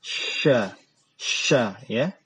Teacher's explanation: lidah bagian tengah itu diangkat ke langit-langit, didekatkan, kemudian dia dihembuskan udara keluar